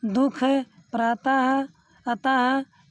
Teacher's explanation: विसर्ग का उच्चारण हा के समान होता है।